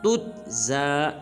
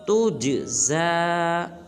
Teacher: جیم کو قلقلہ کریں گے